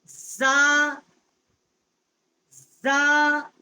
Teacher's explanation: یہ آواز جو ہے یہ سیٹی کی طرح نکلتی ہے . اس کا مخرج جو ہے جب زبان کی کنارہ جو